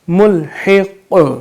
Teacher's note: قاف حروف قلقلہ میں آتا ہے تو یہاں پہ ہم اپنی آواز کو دہرائیں گے, لوٹائیں گے